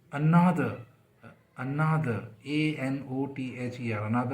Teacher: तो उस पर जो फोकस है वो किस पे, एन पे, ना पे, ANOTHER, अनादर। तो जो शुरू का ए है वो बिल्कुल शॉर्ट हो गया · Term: वीक फॉर्म